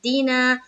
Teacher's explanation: الف مدہ کو ایک الف کی مقدار کے باقدر کھینچ کر پڑھیں گے